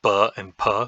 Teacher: we can stop the air completely as in ba and Pa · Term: stops